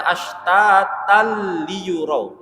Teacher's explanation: Jadi kita membaca ashtatal liyurau. Masukkan saja ke huruf la tapi tidak didengungkan. Bukan ashtatal liyur, tidak didengungkan. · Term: idgham bila gunnah